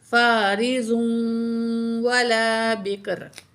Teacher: वक़फ़ करेंगे तो दो पेश ख़त्म हो जाएंगी, रा को साकिन पढ़ा जाएगा।